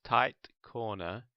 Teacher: the set of words tight Corner may form a glottal stop at the second T